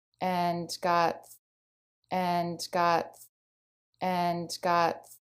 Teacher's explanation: she pronounces all of the Sounds in it the a is in Bat the end and even the D she holds it out